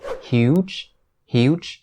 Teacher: keep in mind that this ch sound at the end of the word huge is actually a voiced consonant just same as the word judge or change now those are